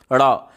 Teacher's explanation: आपके जीभ का जो अगला भाग है वो नोक की तरह पतला होकर के उलट करके तालू को झटके से छू करके फिर सीधा हो जाता है। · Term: उच्छिप्त वर्ण